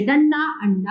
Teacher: इसका उच्चारण नाक से किया जाता है, इसे अनुस्वार या बिंदु कहते हैं